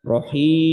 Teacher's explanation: Jadi ketika baca rahim, maka kalau kita pencet hidung kita, maka itu tidak ada suara yang menuju kepada hidung, tidak ada dengungnya